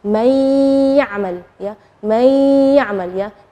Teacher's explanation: Nunnya tidak jelas tapi ada suara dengung gunnahnya. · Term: idgham bi gunnah